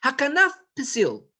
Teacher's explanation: the pay at the end of the first word is soft and the one at the beginning of the second is hard